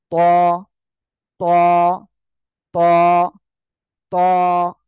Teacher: জিহ্বার আগা সামনের উপরে দুই দাঁতের গোড়ার সঙ্গে লাগিয়ে মুখের ভিতরে বাতাস পূর্ণ করে উচ্চারণ করতে হবে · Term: মোটা আওয়াজে